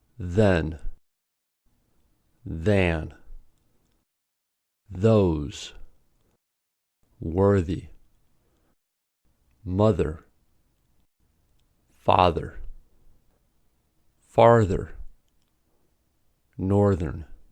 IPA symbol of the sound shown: ð